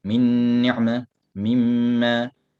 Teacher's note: he will have ghunna only in the noon and the mim